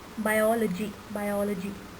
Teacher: So the pause that you want to take is after biol, is after the L, biology, biology, not biology, biol, biol.